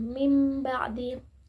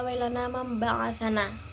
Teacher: Jadi cara membaca iklab yaitu dengan cara menggantikan atau mengubah huruf nun mati atau tanwin menjadi suara huruf mim sukun